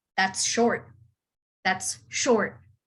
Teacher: i would emphasize the word short